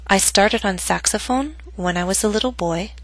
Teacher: note that my voice went down on boy but not to its lowest pitch because the statement is not complete